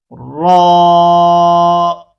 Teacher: زبان کے باریک کنارے اور زبان کی نوک کی جو پشت ہے اوپر والے دانتوں کے مسوڑوں اور تالو سے لگا کر موٹی آواز میں پڑھیں گے